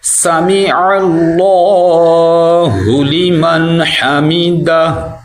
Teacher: عین کی آواز نکالنی ہے اور اللہ کو موٹا کرنا ہے